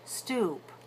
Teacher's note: the lips are still rounded tightly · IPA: /uʷ/